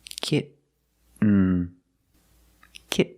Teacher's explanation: you don't release and then you fall to an N kit when you make the stop T the tongue is up almost in the end position so you don't have to change much